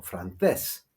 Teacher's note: the stress is on the last syllable, not the penultimate syllable. So we have to show this by using the accent.